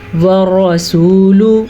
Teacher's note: را کو موٹا پڑھنا ہے کیونکہ را پہ زبر ہے